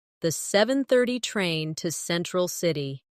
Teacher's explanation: Do you notice how to almost disappears? It blends into the next word sounding like to central city.